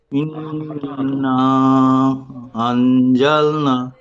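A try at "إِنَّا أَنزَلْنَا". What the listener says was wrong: শেষে আলিফ মাদ্দা। আলিফ মাদ্দা টান হয়নি তো, হারাকাত হয়ে গিয়েছে।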